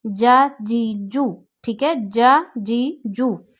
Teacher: اب زبان کی درمیان والا جو پارٹ ہے وہ آپ نے اٹھانا ہے، اوپر درمیان تالو پہ لگانا ہے۔ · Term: جیم